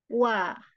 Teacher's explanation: Jadi waw itu makhrajnya dengan memonyongkan kedua bibir. Wa. Jadi bukan memonyongkan tapi tidak mempertemukan kedua bibir ya. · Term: huruf waw